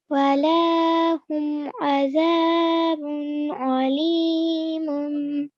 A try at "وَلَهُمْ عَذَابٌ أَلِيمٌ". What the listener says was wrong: Very good effort.